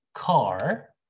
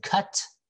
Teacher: short ah because we also have long ah sound right like when you say car that's long ah but when you say cut that's a very short ah